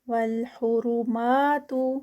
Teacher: را ہیوی ما پہ 2 counts